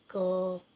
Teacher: क को बोलेंगे तो क को थोड़ा लंबा करेंगे तो उसमें अ की आवाज़ आएगी, क। अरे ना, तो अ की आवाज़ आएगी, तो ये स्वर की सहायता से बोले जाते हैं।